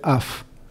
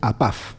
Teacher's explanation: Cambia la fonética porque la letra P recupera su sonido de P, mientras que af es, la letra P se pronuncia como F, pero al estar en esa otra frase recupera el sonido de P